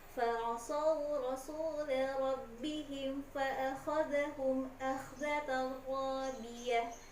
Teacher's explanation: Jangan lupa kho-nya harus bergetar, kemudian dari kata rabbihim ba-nya tasydid harus ada penekanan.